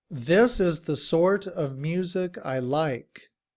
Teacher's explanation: in reduced form, we drop the v sound at the end of of